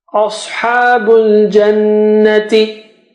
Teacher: Sa is thick and ha is, you know, normal